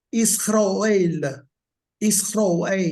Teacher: It's a long vowel. It's pronounced father, like father. It's got an ah sound.